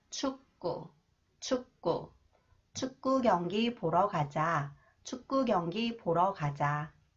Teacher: When 기역 follows the final consonant 기역 that is pronounced 그, it is pronounced 끄 sound. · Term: 경음화